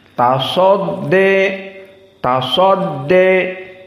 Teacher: Maka di saat membaca tasodde, sodnya tafkhim.